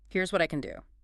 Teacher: Firm stress on the word can.